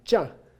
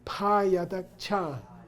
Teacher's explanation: This is non-aspirated high tone.